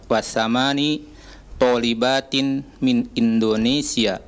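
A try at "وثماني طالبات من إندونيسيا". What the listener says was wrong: Nah, wasamani agak dipanjangkan sedikit.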